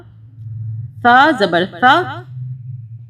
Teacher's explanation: سا زبر سا، اب یہ جو سا ہے اس کو سین کی آواز میں نہیں پڑھنا، سا زبان کو دانتوں میں رکھ کے ہلکا سا باہر نکال کے ادا کریں گے